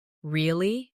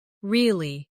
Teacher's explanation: Say, really? With a rising tone to show surprise. Now say, really? With a falling tone to show you don't believe someone. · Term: intonation